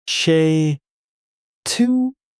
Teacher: It doesn't sound like two separate words. It flows. Che torie. Smooth, connected.